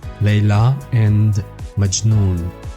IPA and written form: ˈleɪlə ənd məˈdʒnuːn (Layla and Majnun)